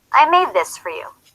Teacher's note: for is reduced in sentences to fur. I made this for you.